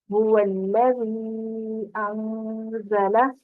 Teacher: تو یہ هُوَ الَّذِي، اس کو 4 حرکت کھینچ کے ہم نے ادا کیا.